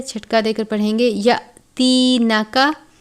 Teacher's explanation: حمزہ کے اوپر جزم کی علامت ہے، چھٹکا دے کر پڑھیں گے